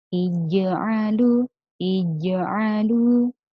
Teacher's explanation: Ij'nya ini tengah lidahnya rapat dengan langit-langit sehingga napasnya tidak boleh keluar.